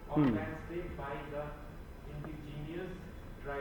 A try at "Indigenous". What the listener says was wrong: नहीं, यहाँ पे इंडिजीनियस नहीं पढ़ेंगे, इंडिजेनस। देखो बेस्ट तरीका है प्रोनाउंसिएशन सीखने का, वर्ड को डिवाइड किया करो। This is इंडी, then this is जे and this is नस, सो दिस इज इंडिजेनस।